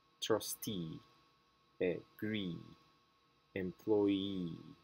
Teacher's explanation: in this suffix the stress goes on e trustee agree employee we need to make sure that we put some uh some stress on the last the last syllable